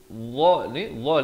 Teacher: ni hujung lidah itu keluar. Dia sama macam zal juga, cuma bunyinya tebal.